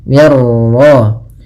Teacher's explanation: mir ra, mirnya tipis, ra-nya tebal. Mir ra. · Idgham itu memasukkan, maka masukkan nun ke ra sehingga suara nunnya hilang. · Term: idgham kamil